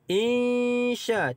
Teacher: sya itu kita baca dengan panjangnya 5 harakat kerana mad asli bertemu dengan hamzah dalam satu kalimah